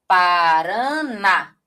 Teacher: Olha só, porque o na, ele é muito mais forte. Então, veja que aqui a sílaba tônica, ela vem na posição 1. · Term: oxítona